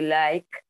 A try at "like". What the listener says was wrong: Mucho mejor.